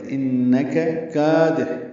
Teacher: حا وسط حلق سے ادا کرنا ہے